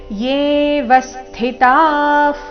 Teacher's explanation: ವ ಮೇಲೆ ಆಘಾತ, ವಿಸರ್ಗದ ಉಚ್ಚಾರಣೆ ಫ ರೀತಿ